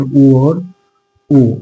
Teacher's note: उ और ओ ये कहां से निकलते हैं? तो ओष्ठ से निकलते हैं। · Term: स्वर वर्ण